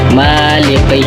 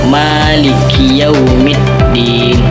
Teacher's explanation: Huruf kaf itu dari pangkal lidah. Huruf ya itu tengah lidah.